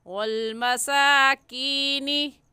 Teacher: वल मसाकीनी, काफ़ या ज़ेर की, या साकिन से पहले ज़ेर आ गया तो या मद्दा, और या मद्दा को एक अलिफ की मिक़दार खींच कर पढ़ते हैं, इसलिए ऐसे खींच कर पढ़ेंगे।